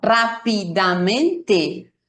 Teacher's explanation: Aquí no, rápidamente. Todas las sílabas se escuchan y todas tienen la misma o una duración similar.